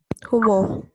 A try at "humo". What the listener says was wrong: No, humo. Without the H. The H is not there. You see it, but you never pronounce it. Unless there is a C before it. But there is no C before it, there is no C. So it's humo.